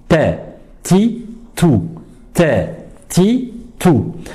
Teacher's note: Alors, premièrement, comment mettre la langue? La langue, il faut la mettre à la racine des incisives supérieures, juste au début du palais. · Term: La lettre T